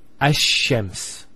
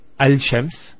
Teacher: what happens instead is the lam is pronounced as a sheen